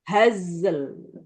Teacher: sukun haz dialirkan, kemudian lam sukun kan juga dialirkan meskipun tidak sebanyak zai sukun. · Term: sifat huruf ketika sukun